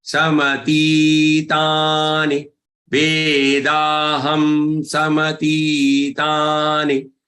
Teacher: And ti, ta, ni. Ti and ta are long ones and ni is short one.